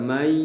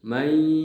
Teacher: Jadi suara kita tertahan karena ada udara yang keluar melalui lewat hidung, kemudian kita tahan dengan ditutup, maka suaranya akan terpengaruh, agak berubah sedikit. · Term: gunnah